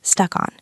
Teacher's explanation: Note the linking sounds, stuck on. It almost sounds like one word